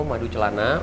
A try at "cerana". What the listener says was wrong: Cerana, bukan celana. Cerana, ya.